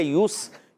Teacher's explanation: یہاں یا پر بھی ہونٹ گول رہیں گے کیونکہ پیش ہے، اور سین سیٹی کے ساتھ ادا ہوگا۔